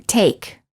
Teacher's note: the lips are not rounded and they are relaxed and the tongue is tense moving from mid High position to high position the common spelling patterns for this sound are a plus consonant